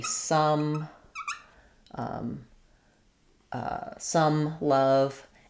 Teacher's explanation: it's a central vowel versus an o. O would be rounded.